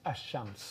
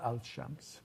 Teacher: the consonant in it becomes a copy of the consonant that's after it